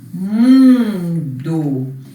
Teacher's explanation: E na palavra mundo, para que serviu o N? Para nasalizar o U.